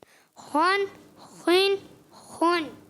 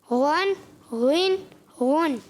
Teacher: جب خا اور غین ادا کریں گے حلق کا اوپر والا حصہ استعمال کریں گے